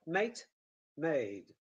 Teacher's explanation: the distinctive feature will remain the vowel length